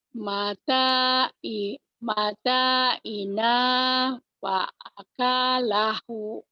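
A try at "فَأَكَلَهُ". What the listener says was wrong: salah panjang pendeknya ujungnya ayo. Ulang lagi. mata'ina fa'akalahu. Mata'ina. Bukan. Fa'akalahu. Fa'akalahu. Nggak ada yang pan.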